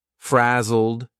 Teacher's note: here is a past simple Ed verb but the pronunciation is a very soft D and you almost don't hear it